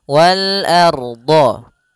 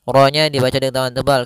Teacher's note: Ro-nya dibaca dengan tebal. Kenapa? Karena dia ada huruf ra sukun di dalam huruf fathah.